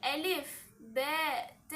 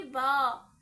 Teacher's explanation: نیچے کی طرف آواز جا رہی ہے، مطلب کہ ان حروف میں پستی ہے۔ ب اگر ہم پڑھیں گے با تو یہ با مطلب آواز کا اوپر کی طرف اٹھنا، تو یہ استعلاء کا صفات الحروف میں تبدیلی ہو گئی، اور یہ تو لحن ہے، لحن مطلب کہ غلطی ہے، اور ہمیں غلطی سے بچنا چاہیے۔ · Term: استفال